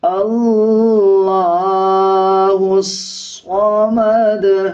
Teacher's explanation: لام کے اوپر کھڑا زبر ہے، 1 سیکنڈ لمبا کریں گے۔ ہا کو صاد کے ساتھ ملا کے پڑھا جائے گا اور صاد موٹے حروف میں سے آتا ہے، اس کو پر یعنی موٹا پڑھا جائے گا۔